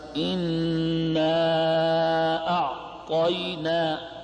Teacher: اب اس میں جو مد ہو رہا ہے یہ بھی توسط کی مقدار ہے. اس کو مد منفصل کہتے ہیں، مد جائز بھی کہتے ہیں. 4 الف کے برابر